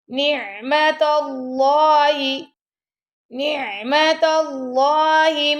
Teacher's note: اللہ کے نام سے پہلے آ گیا زبر تو یہاں پہ ہم اللہ کے نام کو موٹا پڑھیں گے